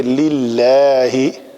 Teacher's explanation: اس میں جلالہ کا لام اگر اس کا ماقبل کسرہ کے ساتھ ہو، زیر کے ساتھ ہو، تو اس کو پتلا پڑھا جائے گا